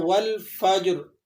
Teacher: جیم ساکن ہے، ٹھیک ہے، اس پر جزم لگا ہوا ہے، تو آپ نے اسے ہلا کر پڑھنا ہے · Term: قلقلہ